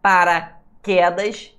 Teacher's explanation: O queda, é a sílaba mais forte.